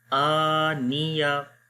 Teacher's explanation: खाली हमज़ा को लंबा करेंगे, नून और या दोनों को नहीं लंबा करेंगे।